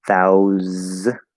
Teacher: So thousand, it's a voiceless th, thou, and that's of course the ow diphthong. And the s, of course, is a z because it's English